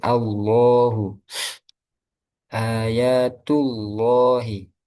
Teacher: Ketika sebelumnya berharakat fathah atau domah seperti Allahu ayatullahi. Nah, itu lamnya dibaca tebal atau tafkhim.